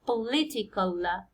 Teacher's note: the second syllable is li يعني stress يجي على li